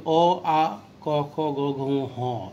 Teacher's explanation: এগুলো কিন্তু উচ্চারণ স্থান কণ্ঠ, কারণ বাতাসটি মূলত ওখানেই বাধাপ্রাপ্ত হয়ে উচ্চারিত হয়। আবারও বলছি, স্বরধ্বনি উচ্চারণের সময় কিন্তু এই বাধাপ্রাপ্তের যে বিষয়টি হচ্ছে তীব্র নয়, খুবই সূক্ষ্ম পর্যায়ের। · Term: কণ্ঠ বা জিহ্বামূলীয় বর্ণ